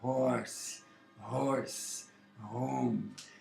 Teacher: o H tem aquilo que se chama som aspirado, uma coisa bem aqui embaixo na garganta